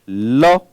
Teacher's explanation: ल का उच्चारण स्थान भी दंत होगा।